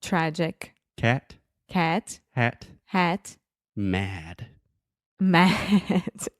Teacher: so your mouth is very open and your tongue is pushed towards the front of your mouth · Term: the ah sound